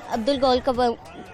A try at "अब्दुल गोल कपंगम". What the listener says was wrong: कबंगम नहीं है, अब्दुल गोल कपंगम।